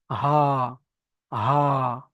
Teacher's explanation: হালাক বা কণ্ঠনালীর শুরু হতে উচ্চারিত হয় হামজা, হা। হামজা, হা, দেখেছেন?